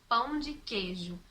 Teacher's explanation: a gente pronunciar pão de queijo, sem falar a vogal I